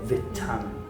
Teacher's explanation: I feel like in Wales, the T sound is really strong as well.